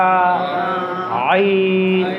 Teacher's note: আইন আমি কিভাবে উচ্চারণ করছি হরফটি? আমি গলার ঠিক ওই মাঝখানটা চাপ দিচ্ছি।